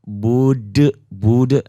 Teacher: Karena dihentikan jadi qalqalah kubro, qalqalah besar ya ini. Dibacanya kuat jahar, dibaca kuat dan tegas.